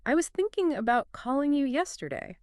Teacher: You hear the emphasis on thinking, calling, and yesterday. Even if you miss was, about, or you, catching those three stressed words gives you the entire essential meaning.